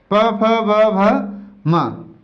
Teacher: तो इसमें आ जाता है, देखिए, जैसे प, जैसे फ, जैसे ब, जैसे भ, जैसे म, प फ ब भ म। तो जब हम इनका उच्चारण करते हैं तो इनका उच्चारण करते समय हमारे ओष्ठ आपस में स्पर्श होते हैं। आप उच्चारण करके देखिए इसका, जैसे हम उच्चारण करते हैं प का, तो जैसे हम प का उच्चारण करेंगे तो क्या होगा, दोनों ही ओष्ठ आपस में स्पर्श हो रहे हैं। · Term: ओष्ठ व्यंजन